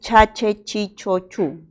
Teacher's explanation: Este es un sonido africado y es palatal porque la lengua se va a la zona del paladar y es sordo porque no presenta vibración de las cuerdas vocales.